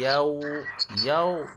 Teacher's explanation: dia kena muncung mulut sebab wau kita kena muncung mulut